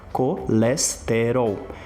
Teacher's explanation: Como que a gente do Brasil normalmente pronuncia essa palavra colesterol? Percebe aqui que cada uma das sílabas elas têm mais ou menos a mesma duração.